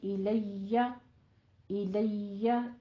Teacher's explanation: یا کے اوپر تشدید ادا کریں لیکن اس کو جیم یا شین کا ساؤنڈ نہیں دینا ہے. الیہ الیہ الیشا نہیں کہنا ہے, ٹھیک ہے.